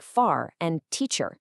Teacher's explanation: And that just means that the R sound is pronounced pretty much everywhere you see it. So that word car we talked about in American English, you really hear that final R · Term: rodic